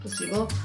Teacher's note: The stress is on the middle